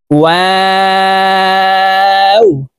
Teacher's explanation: ঠোঁট গোল করে দুই ঠোঁটের মাঝে ফাঁকা রেখে ওয়াও হরফ উচ্চারণ করতে হবে।